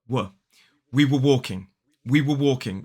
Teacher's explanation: Now, the weak form is much more common in everyday speech, in natural speech, and it is were. So it's the w and a schwa.